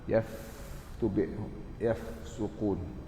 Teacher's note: Huruf fa bibir bawah masuk bibir atas.